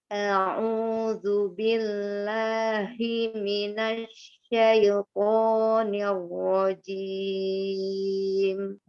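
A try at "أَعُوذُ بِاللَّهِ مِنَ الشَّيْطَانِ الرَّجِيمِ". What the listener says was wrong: Pas syaitonya itu tidak syaito, tidak syaito, bila syaito, ya syaito tidak dimiringkan ya, tidak dimiringkan. Natural aja, tidak apa ya, nggak ngelibet mulutnya, bukan syaito gitu kan. Untuk tidak mengepung, bukan dibentuk dari mulut ya, tapi dari mengangkat pangkal lidah. Minasyaiko, buka mulutnya.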